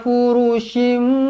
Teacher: Furushim, mim kecil, ekornya ke bawah bertemu dengan ba, iklab. Dibaca dengung dua harakat. Dengung jangan kurang dari dua harakat.